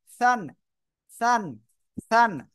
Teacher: জিহ্বার আগা উপরে দুই দাঁতে আগা লাগান